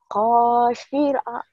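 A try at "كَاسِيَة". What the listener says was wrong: Enggak ada yang panjang. Enggak ada yang panjang. Enggak ada yang panjang. Kosia. Kosia.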